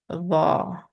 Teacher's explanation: Raise the back of your tongue and you get the heavy sound.